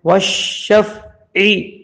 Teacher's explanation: عین کو حلق کے بیچ میں سے پڑھنا ہے،